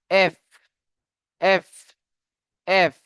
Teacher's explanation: যখন আমরা এফ উচ্চারণ করব উপরের দাঁত নিচের ঠোঁটের অগ্রভাগে লাগবে।